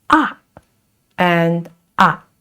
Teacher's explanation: the fourth tone, it is very affirmative. It goes down